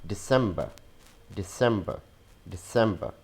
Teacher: Again, removing R sound and adding a schwa sound.